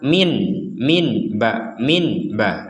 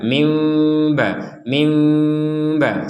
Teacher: bacanya dengan ya ada unsur samarnya ya ada unsur samarnya ada unsur dengungnya juga